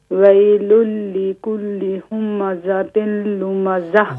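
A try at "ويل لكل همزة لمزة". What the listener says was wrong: ہومزاتل کیونکہ میم پر بھی زبر ہے، زا پر بھی زبر ہے تو حرکات کو واضح کیجیے. ہومزاتل لمزہ.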